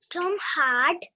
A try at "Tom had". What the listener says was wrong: It is not hard. It is had.